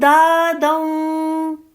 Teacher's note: دال کی تنوین کو، دو زبر کو واو کے ساتھ ادغام کر کے پڑھیں گے